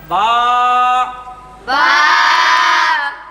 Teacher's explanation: দুই ঠোঁটের ভিজা জায়গা হইতে